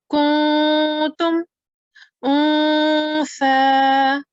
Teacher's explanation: noon sakin and tanween will be pronounced with a light nasal sound with gunna for 2 seconds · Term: ikhfa